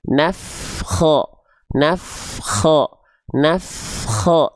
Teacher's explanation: Jadi dia terus f-nya ngalir. Ya, nafas suaranya terus mengalir. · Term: mengalir nafas